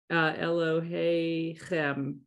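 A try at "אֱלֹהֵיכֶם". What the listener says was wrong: Beautiful.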